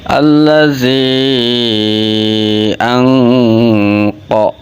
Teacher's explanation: menyamarkan suara nun sukun sebab bertemu huruf qof · Maka ketika ada nun sukun atau tanwin bertemu dengan huruf qaf, hukum bacanya ikfa hakiki. Ikhfa itu artinya samar, hakiki hakikatnya menyamarkan suara nun sukun atau tanwin sebab bertemu huruf qaf.